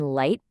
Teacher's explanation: For the I sound in light, it's almost like your mouth does a little smile. Your jaw rises as you say it.